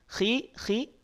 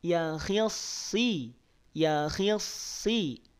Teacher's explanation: kalau dalam kondisi kasrah Bapak Ibu dia ketebalannya berkurang